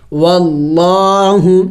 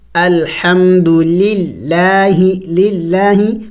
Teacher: یہاں پہ دیکھیں لفظ اللہ سے پہلے جب زبر آ جائے یا پیش آ جائے تو پھر لفظ اللہ کو پر کر کے موٹا کر کے پڑھا جائے گا